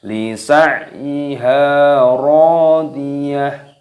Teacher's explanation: Lisa'yiha ro, panjangkan ro-nya mad tabi'i 2 ketukan. Radiyah, taknya dimatikan berubah menjadi ha ketika waqaf.